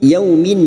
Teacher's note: yaumin fathah bertemu waw sukun kita lunakkan.